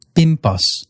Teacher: N before a B or a P is going to turn into an M